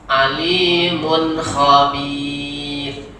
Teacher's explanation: Jadi mun tidak boleh dilamakan mun khabir, salah nanti. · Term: izhar